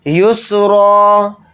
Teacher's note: را کو جلدی پڑھیں گے اور را کو باریک پڑھیں گے